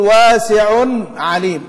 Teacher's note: وبالمرة بما أننا تكلمنا عن الاثنين دول، التنوين طبعا يمنع الإدغام لأنه فاصل، أنت تفصل بنون، تقول واسع عليم، هي صحيح العين عين، في الخط ملتقيان لكن في الصوت غير ملتقيين، في فاصل اللي هو التنوين